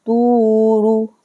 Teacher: طوا کو کھینچیں گے واو ساکن کے ساتھ ملا کے 2 سیکنڈ کے لیے. را کو بالکل نہیں کھینچنا ہے، را کے اوپر بس پیش ہے. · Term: واو مد